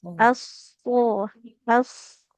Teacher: huruf shadnya lebih ditebalkan, Ibu ya